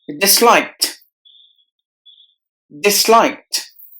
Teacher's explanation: the D at the end is replaced with the T sound